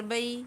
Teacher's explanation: لام ذیلی ہا کی آواز کو حلق کے درمیان والے حصے سے ادا کرتے ہوئے ہا واو پیش ہو، یہاں پر واو مدہ ہو رہی ہے، ہا کو ایک الف کی مقدار کھینچتے ہوئے وَتُصْلِحُ بین الناسی با یا زبر بئی، یہاں پر یا لین ہو رہی ہے، با کو بغیر کھینچے بغیر جھٹکا دیے ہوئے پڑھنا ہے